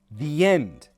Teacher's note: Stress on end. We link the and end with a yuh sound. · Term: y sound